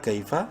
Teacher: کاف یا زبر کا یالین ہے، کاف کو شارٹلی پڑھیں گے